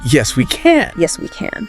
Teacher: he does say, Yes, we, and then there's a pause.